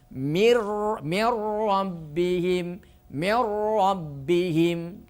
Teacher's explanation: Yang kedua, yang berikutnya nun mati bertemu dengan ro, maka suara nunnya ditiadakan. Masukkan huruf nun itu suaranya ke huruf ro dengan tidak berdengung, yang disebut idgham bila gunnah. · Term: idgham bila ghunah